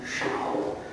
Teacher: When pronounced using the third tone, shao, the character means a few